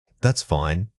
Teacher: When stating that's fine with a falling tone, you are reassuring someone. But if the tone rises at the end on fine, it means you are actually questioning whether the situation is acceptable or appropriate.